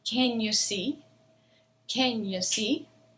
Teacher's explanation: the word c is going to be the loudest it's going to be the longest it's the word with the stress because it's the word with the information can you see can